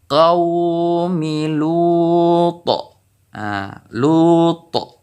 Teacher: Jadi qalqalah ataupun pantulan huruf ta ini lebih besar dikarenakan ini terdapat di saat kita mewakafnya ataupun di saat kita berhenti dalam membaca Al-Quran.